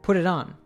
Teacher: Oftentimes, of gets reduced to a schwa sound, so she says kind of as kinda. Then she links the words in put it on and turns those T's into flap T's